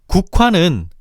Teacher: 국화는 국화가 아니라 국화로 발음하는데 이때 키읔의 정체를 분석해보면 국의 종성 기역과 화의 초성 히읗이 만나 축약된 것임을 알 수 있어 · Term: 자음 축약